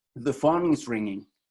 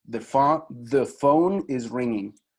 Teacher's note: una de esas vocales que no está en el alfabeto es la vocal schwa, que es la que nosotros usamos casi siempre que usamos el artículo the